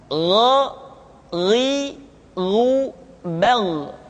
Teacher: Kha mengalir nafas dan Gha tidak mengalir nafas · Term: huruf Gha